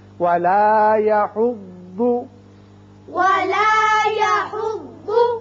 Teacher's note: ضاد کے مخرج میں آپ کی زبان کی کروٹ اوپر والی داڑوں کے ساتھ لگے بائیں طرف